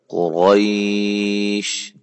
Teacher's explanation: وقف کی صورت میں شین ساکن ہو جائے گی، اور یا لین کے بعد یہ ساکن ہو جائے گا، اس لیے ہم اس کو قریش لمبا کر سکتے ہیں زیادہ، قریش، ٹھیک ہے۔